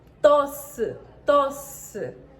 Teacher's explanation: 4 fonemas. Os 2 S nesta palavra fundem-se num único som.